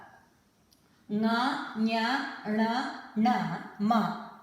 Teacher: The last letter in each Varga, Nga, Nya, Na, Na, Ma are Anunasika letters. That means there is nasal, your nose is used in pronouncing those letters. There is a nasal touch to those letters.